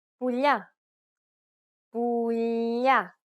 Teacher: In the third case, we have the palatization of the L sound, which results in a sound similar to the gli in the tagliatelle pasta. The tongue is flatter than the regular L because it's pronounced with the middle of the tongue touching the roof of the mouth.